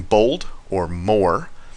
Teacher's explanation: make sure that it is literally just the O, and you're not sort of moving into a different vowel as you say it. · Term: pure sound